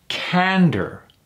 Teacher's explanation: so there's only two syllables here Ander emphasis on the first one